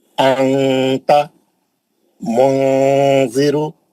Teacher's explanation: मैं क्या करा, मुंह खोल दिया, मुंह खोला, जबान की नोक नीचे के दांतों में पकड़ लिया, नीचे की दांतों में लगा के जबान को टाइट कर दिया, ऊपर जाने नहीं दिया, उसको मखरज को टच होने नहीं दिया, आवाज को नाक में स्विच कर दिया, नाक में लेके चले गया और गुन्ना करके पढ़ा अंता मुंजिरु। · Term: इख्फा